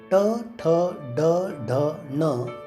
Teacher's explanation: आज जे आपण ट, ठ, ड, ढ, ण शिकतो आहोत त्याला मूर्धन्य म्हणतात. जीभ आतल्या बाजूस वळवून टाळूला स्पर्श करून या अक्षरांचा उच्चार केला जातो